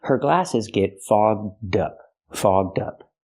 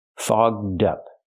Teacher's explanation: link the D sound to the second word up so you have dup together